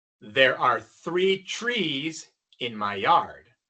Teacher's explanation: Para 3 se escucha TH. Y para árbol se escucha CH.